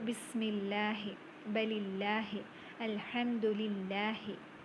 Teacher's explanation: the lam in the word Allah is pronounced lightly with an empty mouth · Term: tarqiq